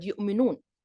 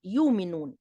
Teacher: some old Arab tribes pronounce the glottal stop in the middle of the word